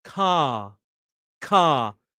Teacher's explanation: your tongue is down and back. Ah, your mouth is open, your jaw wide, like jaw. Uh, if I exaggerate, uh, car car.